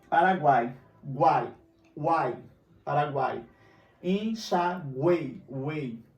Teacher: Eu tenho encontro de três vogais na mesma sílaba. Então, ele é tritongo.